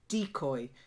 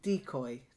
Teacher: fine here but the stress was slightly up it's decoy so the stress is on the first syllable